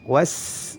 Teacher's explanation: Adapun huruf sin, lidahnya tetap di bawah, terhampar.